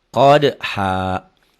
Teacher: nyamber ke dal, dalnya ada e-nya karena huruf qalqalah